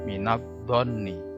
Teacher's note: Alif lamnya tidak dibaca, masuk ke huruf dhot. Dan di situ ditandai tasjid kalau di Al-Qur'an di Indonesia. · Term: idgham syamsiyah